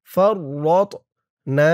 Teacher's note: আলা মা ফাররাতনা, ফা দিয়ে র ধরবে, ফা র জবর ফার, র দিয়ে আবার এই ত কে ধরবে। তটা কলকলার হরফ, ধাক্কা দিয়ে পড়তে হবে। ফাররাতনা, না একা লিফট টান।